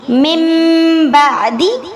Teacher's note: اسی طرح من بعدی، اس کو ہم نے من بعدی نہیں پڑھنا، نون ساکن کی آواز کو میم میں بدل دیں گے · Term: اقلاب